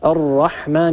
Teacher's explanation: هذه راء مفخمة لأنها مفتوحة